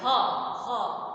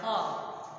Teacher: ह को बोलेंगे तो इसका उच्चारण कंठ है, गले में ही आवाज रह जा रही है, ह, अंदर जोर पड़ रहा है, ह।